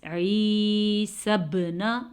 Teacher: با پہ کلکلا ہو رہا ہے کیونکہ با حروف کلکلا میں سے ہے